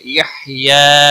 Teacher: ہا کو ہلانا نہیں، یا کے اوپر کھڑی زبر ہے، ایک الف کے برابر کھینچ کر پڑھیں گے